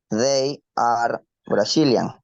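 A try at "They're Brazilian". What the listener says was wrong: Right now, you're saying they are Brazilian, right? You're saying this. They are Brazilian. But in the exercise, we have this. This is the contraction. So in this case, the pronunciation is there, right? They are es cuando yo no tengo la contracción, como aquí, ¿verdad?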